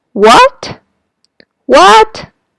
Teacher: going up is similar to Chinese second tone